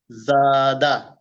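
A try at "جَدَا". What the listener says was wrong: মাশাআল্লাহ, ইজরা করেন।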